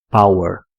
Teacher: é exatamente esse som de E de cabeça para baixo que é o schwa sound